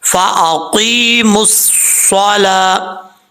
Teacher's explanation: میم کو صاد سے ملائیں گے کیونکہ صاد کے اوپر شد ہے